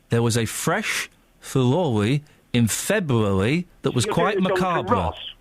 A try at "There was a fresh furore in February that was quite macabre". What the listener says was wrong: You're doing a Jonathan Ross, which is an imitation of the Andalusian lisp.